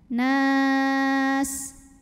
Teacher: Jika berhenti nunnya ini boleh panjang 2, 4 atau 6 harokat, asal konsisten dalam sekali bacaan. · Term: mad arid li sukun